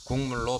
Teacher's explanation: 국물은 뒤에 오는 비음 미음의 영향을 받아 기억이 비음 이응으로 바뀌어 국물로 발음됩니다. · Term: 비음화